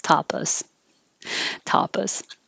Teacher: should be pronounced but americans change this to americanize it and the a that's not stressed changes to uh